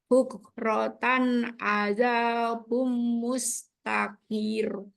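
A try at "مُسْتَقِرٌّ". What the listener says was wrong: Nggak boleh panjang. Qafnya nggak boleh panjang. Mustakir. Tahan tipis semua.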